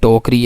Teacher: उसमें जो ट है वो असल में वो ये होता है, अनरिलीज्ड, अनएस्पिरेटेड होता है।